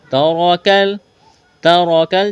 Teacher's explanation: تا کو باریک کرنا ہے، جلدی پڑھنا ہے، را کو جلدی پڑھنا ہے، موٹا کرنا ہے